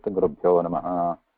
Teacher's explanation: the actual word there is Gurubhyaha because of Sandhi between that Visarga and the Na. After coming that, it becomes Rishibhyo, Gurubhyo.